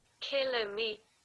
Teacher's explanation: the British people give the stress in the first syllable